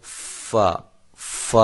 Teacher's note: اوپر والے جو دو دانت ہیں یہ آپ کے ہونٹوں کی تری والے حصے سے ملتے ہیں۔ دانت جو ہیں اوپر والے دو، سامنے والے دو بڑے دانت جن کو ہم ثنایا کہتے ہیں، وہ آپ کے ہونٹوں کی تری والے حصے سے جب ملیں گے تو فا، فا ادا ہوگا، فا۔